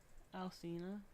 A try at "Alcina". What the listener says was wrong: Apparently, it's supposed to be a CH.